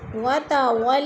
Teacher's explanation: وہ ساکن سے پہلے لام کے اوپر زبر ہے، وہ لین کو لمبا بھی نہیں کرنا اور جھٹکا بھی نہیں دینا